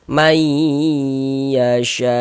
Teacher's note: Kemudian di bagian mayya itu suaranya itu kita tahan ya. kita ghunahkan, kita tahan suaranya, kita panjangkan sejenak sepanjang dua harakat.